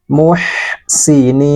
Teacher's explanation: huruf ha dalam keadaan sukun alirkan nafasnya